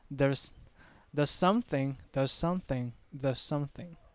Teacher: the s from the word there and the s from the word something are blended together.